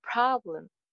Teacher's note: Problem ka first syllable stress hoga.